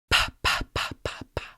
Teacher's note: No, it doesn't vibrate, which means it's a voiceless sound. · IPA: /p/